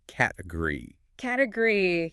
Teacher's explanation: Which is why category looks like it has 4 equal syllables, category. But a native speaker completely swallows the middle